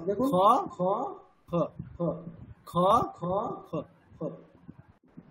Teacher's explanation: পুরোপুরি মুখটা বন্ধ না করেও প্রায় বন্ধ করার মতো অবস্থায় একটা খকার উচ্চারণ করছেন